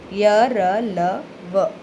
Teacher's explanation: हिंदी वर्णमाला के अंतस्थ व्यंजन है य, र, ल, व, या फिर आप इसका तात्पर्य आप ऐसे भी ले सकते हो कि इन व्यंजनों का उच्चारण करते समय जीभ मुख के किसी भाग को पूरी तरह स्पर्श नहीं करती और हवा मुख में बहुत कम समय के लिए रुकती है।